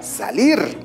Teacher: con la siguiente palabra la palabra salir acá tenemos dos sílabas te das cuenta que la mayor fuerza de voz se encuentra en la última sílaba salir pero esta termina en consonante r que no es ni